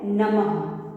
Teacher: तो ये कुछ शब्द हैं जिनको हमने यहाँ पढ़ा, जिसमें हमने विसर्ग का प्रयोग किया है, या फिर हम जब इसको पढ़ते हैं तो विसर्ग के वजह से हमें ह की ध्वनि यहाँ पे सुनाई देती है